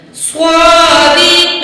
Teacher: یا ساکن ہے، ماں قبل زیر ہے تو یہ یا مد ہے، دو الف کے برابر کھینچیں گے